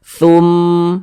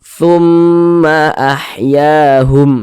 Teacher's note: sejenak tumma ahyahum Tum di bagian tumnya itu di bagian Tum itu ditahan dipanjangkan sejenak